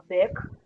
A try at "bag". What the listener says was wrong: Back yang G tadi jangan dibaca G gitu, nggak usah. Back, berhenti. Kalau K boleh dibaca.